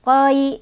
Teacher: Lunak tuh toi kayak gitu ya cara bacanya. Toi, nggak usah dipanjangin kalau nggak berhenti. Jadi lanjut aja toi gitu. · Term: huruf lin